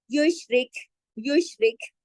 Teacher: وَمَن یش شین کو جماؤ کے ساتھ یشرک. را کو باریک پڑھیں گے کیونکہ را کے نیچے زیر ہے. یشرک یشرک اس طرح کاف پڑھا جاتا ہے تو اس طرح سے آواز ہوتی ہے.